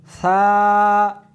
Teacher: اس حرف کو زبان کو دونوں دانتوں کے درمیان رکھ کر پڑھیں گے۔